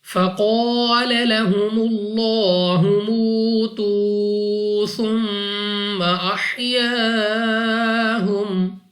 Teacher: قاف مستعلیہ میں سے ہے, موٹا پڑھنا ہے منہ اور آواز کو کھول کر. اس کے بعد الف سے پہلے زبر الف مدہ ہے, 2 سیکنڈ تک لمبا کرنا ہے.